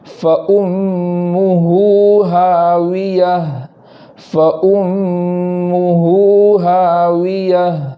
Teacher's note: ہاویہ میں واو کو ادا کرتے وقت ہونٹ گول کریں گے اور آخر میں گول تا کو ہا سے بدل کر جزم کے ساتھ پڑھیں گے، اس طریقے سے پوری آیت پڑھیں گے فَأُمُّهُ هَاوِيَةٌ فَأُمُّهُ هَاوِيَةٌ۔